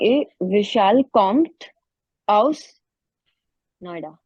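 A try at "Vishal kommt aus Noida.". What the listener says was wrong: Perfect.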